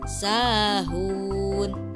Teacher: ada wawu sukun, sebelumnya ada huruf ha berharokat doma, maka dibaca 2 harokat dengan 1 keayunan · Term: mad tabi'i